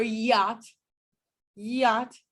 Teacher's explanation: of my tongue as well it's a labial velar sound so the front of the tongue is raised towards the palatal area a region of the roof of the mouth so the hard palate but it doesn't come close enough for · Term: approximant